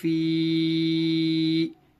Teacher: یا ساکن سے پہلے زیر ہونے کی وجہ سے یا مدہ ہوگا, یا مدہ کو تھوڑا کھینچے اور معروف پڑھیں